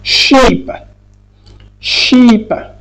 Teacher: À la position où on a D, E, et qui n'est pas suivi par la lettre R, mais suivi par n'importe quelle autre voyelle, consonne, là, dans ce cas, le E devient I, c'est-à-dire il prend le son I long.